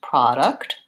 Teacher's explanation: the first syllable stressed product and it has a clear vowel